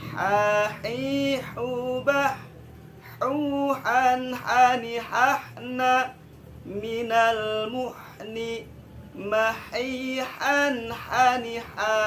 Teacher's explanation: huruf H ya, kerasa dia mengalir ya, sifat rikhwan itu kerasa kan